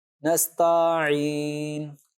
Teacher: نستعین میں تا کو کھینچ دیتے ہیں، نستعین، تا الف زبر تا۔